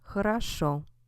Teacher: we have хорошо stressed on the end, these two O's sound different